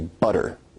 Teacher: your tongue is producing a tap sound there rather than a full stop or plosive sound